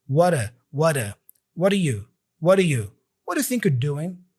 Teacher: The D here for do is a very light D, like a flap D almost.